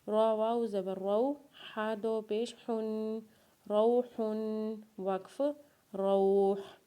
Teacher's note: را کو واولین کے ساتھ پڑھیں گے، اور ہا کے اوپر جب دو پیش پڑھیں گے تو ہا کے اوپر غنہ کریں گے، اور وقف کے بعد ہا کو ساکن پڑھیں گے